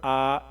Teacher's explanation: उसके बाद फिर क्या है, हमज़ा खरी ज़बर आ, एक अलिफ के बराबर खींचेंगे, 1 सेकेंड 2 सेकेंड के आसपास